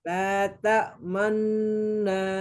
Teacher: Ta'manna, dia itu jelas minimalnya 3 harokat.